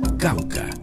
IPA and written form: ˈkawka (Cauca)